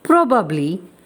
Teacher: It has 3 syllables, even though a lot of people drop the middle one.